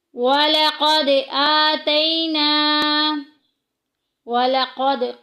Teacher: قاف کو پورا ادا کریں گے، دال کو ہلا کے ادا کریں گے، حروف کلکلہ میں سے ہے